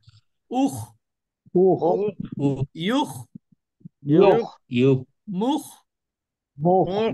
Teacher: মুখ, ক্ষয়ের উচ্চারণের মধ্যে একটু সৌন্দর্য আছে, সেটা হলো বাংলায় ক খ যেটা, এই ক্ষয়ের মতো উচ্চারণ হবে না, একটু ভেতর থেকে বাধাগ্রস্ত হবে।